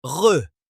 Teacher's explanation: Et enfin, il y a une uvulaire en français, le r, où la luette se met à vibrer sous le passage de l'air